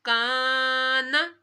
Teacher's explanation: الف سے پہلے زبر آ رہا ہے تو الف مدہ اور کاف، اس کاف کو پتلا پڑھنا ہے